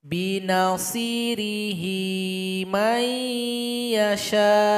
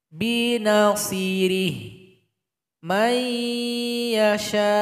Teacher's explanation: Kalau kita baca lanjut, hi dipanjangkan karena maksilah qasirah.